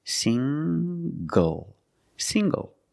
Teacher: the n g makes the nasal sound plus the hard G